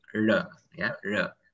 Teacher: Jadi jangan R-nya jangan sampai bergetar ya